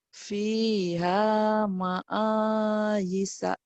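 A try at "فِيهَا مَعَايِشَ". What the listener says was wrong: fiha ma'aisha. 3 shinnya dilatih ya. Ma'aisha. Shin ya Bu ya.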